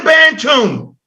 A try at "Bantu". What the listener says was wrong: Stop putting the N on the end of Bantu, yo. No, Bantu.